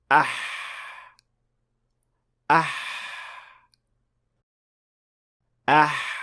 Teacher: with ha you'll be pushing air out the friction of that air passing through the small opening generates the ha sound